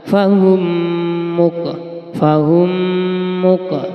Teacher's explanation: mim sukun yang bertemu dengan huruf mim maka harus dibaca diidghamkan fahumuk fahumuk lamanya menengunya dua harakat atau satu Alif fahum fahum